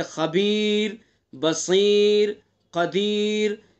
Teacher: تو یہ اسی قاعدے کے اندر یہ شامل ہے کہ را ساکن ہو، اس سے پہلا حرف ساکن ہو، اس سے پہلے زبر پیش ہوگا تو را پر ہوگی، اور زیر ہوگا تو را باریک ہوگی۔ لیکن را ساکن سے پہلے اگر یا ساکن ہے تو پھر را ہر حال میں باریک ہوگی